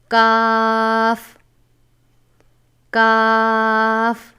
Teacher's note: یہ بھی حروف مصعلیہ میں سے ہے، جسے ہمیشہ پر پڑھا جاتا ہے. کاف کاف زبان کی جڑ اور تالو کے سخت حصہ سے ادا ہوتا ہے